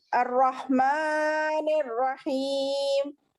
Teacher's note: थोड़ा मीम को खींचो बेटे, मीम पे खड़ा जबर है ना